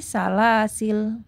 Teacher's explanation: salasila gitu atau yang kedua yaitu boleh dibaca yang kedua yaitu membuang Alif ya alifnya Berarti enggak dibaca sehingga berubah menjadi lam sukun saja menjadi salasil ya Jadi bisa dibaca salasila atau salah hasil kalau